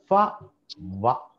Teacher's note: ఫ అన్నప్పుడు చూడండి, కింది పెదవి పళ్ళని తాకుతుంది, ఫ. తర్వాత వ, దీన్నే లేబియో డెంటల్ అని చెప్తాం.